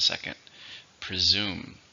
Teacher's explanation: How many syllables are in presume? 2. Stress on the second.